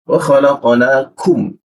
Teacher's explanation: Kum sifatnya itu ada hembusan tipis dia